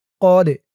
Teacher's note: ওয়ালাকাদ, ওয়া লা কদ, কফ দিয়ে এই দালকে ধরবে। দালটা কলকলার হরফ, ধাক্কা দিয়ে পড়তে হবে।